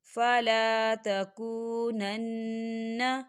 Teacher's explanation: یہاں نون مشدد ہے تو یہاں پر غنہ ہوگا۔